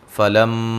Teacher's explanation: میم مشدد پہ غنہ ضروری ہے